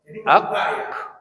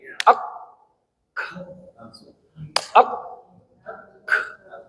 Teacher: ketika kita mengucapkan ka, antara lidah kita bagian dalam dengan langit-langit kenceng, dikencengin. Ketika dimatiin, dihidupin lagi, dia udaranya nyemprot. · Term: hamesnya